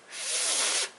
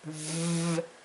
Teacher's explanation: The F makes the unvoiced sound, and V is voiced.